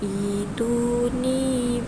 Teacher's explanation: cara bacaannya ialah dua harakat, kerana mad badal adalah dua harakat sahaja bacaannya